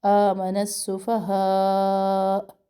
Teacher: مد کو ہم نے کھینچنا ہے، اور آخر میں حمزہ کی آواز ہے کیونکہ حمزہ کو ہم ساکن کر رہے.